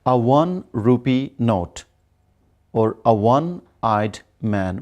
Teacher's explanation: one is a word that although is beginning with O, but here it is giving us wa, that is a consonant sound